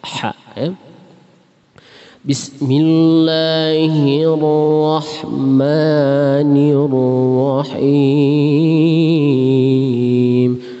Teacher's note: Ya, hati-hati dengan ha ujungnya ya. Ha itu termasuk makharijul huruf bagian al-halqi ya. Ha tenggorokan bagian tengah.